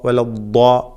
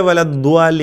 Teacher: തഫ്ഖീം ചെയ്തുകൊണ്ട് പെരുപ്പിച്ചുകൊണ്ട് ഉച്ചരിക്കേണ്ട ഹർഫാണ് ദ്വാദ്.